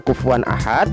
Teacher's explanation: nun sukun atau tanwin yang demikian itu harus terang jelas dan pendek bunyi suaranya jelas tidak samar dan tidak mendengung